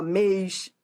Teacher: mê também é tônico tem timbre fechado mas é tônico é forte